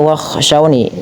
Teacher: Bagi teman-teman yang mungkin baru pertama kali membaca mushaf rasum Utsmani biasanya seperti maf cetakan Madinah maka dia biasanya bunyi ee yanya meskipun tidak ada titiknya dia tetap dibaca dengan ee panjang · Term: mad thabi'i